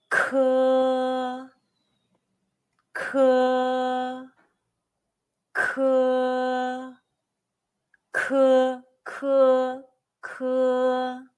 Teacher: It's like the K in the English word kid, but push stronger air out from the very back of your tongue and your throat when you say it. Remember, 科 is pronounced with a strong puff of breath. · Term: initial 科